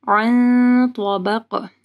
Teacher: پھر عین کو واضح پڑھنا ہے گلے کے درمیانی حصے سے، نون ساکن کے بعد تو ہے، اخفا غنہ ہوگا، عن طبق، تو کو موٹا پڑھنا ہے اور قاف کے اوپر قلقلہ کرنا ہے۔